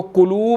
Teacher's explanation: واو مدہ ہے، 1 سیکنڈ لمبا کریں گے